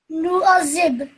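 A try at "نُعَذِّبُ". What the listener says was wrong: Not zib. Don't say z. Say nu'adhib.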